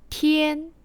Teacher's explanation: Le T est proche du français, mais fortement expiré, encore une fois.